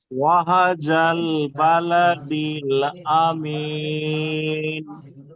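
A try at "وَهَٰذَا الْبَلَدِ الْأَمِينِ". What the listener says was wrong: ওয়াহাটা টান আছে, হার উপরে খালা জাবার আছে, একটু টান দেবেন, ঠিক আছে?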